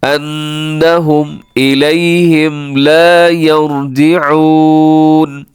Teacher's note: انہم یہاں پہ نون ساکن, یہاں نون کے اوپر تشدید ہے, شد ہے, تو یہاں پر آپ نے آواز کو ناک میں لے کے جانا ہے